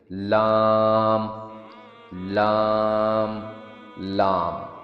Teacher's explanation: لام لام. اس کا ساؤنڈ تب نکلتا ہے جب زبان کا اگلا حصہ اپر ٹیتھ کے نیچے گم لائن کو ٹچ کرے اور ہوا نکلنے کے لیے سائڈ سے گزرے. لام لام لام.